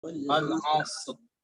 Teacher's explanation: Jadi perhatikan di situ ada huruf ra dan ra itu dibaca tebal. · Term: tebal pula